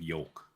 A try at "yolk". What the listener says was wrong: Why do you say it like that? You put so much emphasis on the oh. sounds like you're swallowing. is yolk. Dude, you're saying it like you're swallowing jizz when OL. Dude, it sounds like you're throating something. Yolk. Yolk.